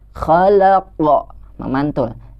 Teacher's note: ada qalqalah huruf qa yang ketika dibaca kita harus memantulkannya. Jadi jangan ditahan, jangan tertahan.